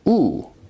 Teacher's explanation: High, back, tense, rounded vowel.